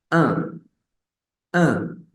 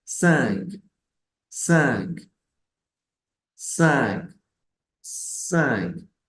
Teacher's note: 5, el número 5 se pronuncia o se escribe con una I y una N, que de ahora en adelante vamos a entender que la I y la N en francés, así como la I y la M, se van a pronunciar un, un. Es un sonido como una especie de A abierta nasal.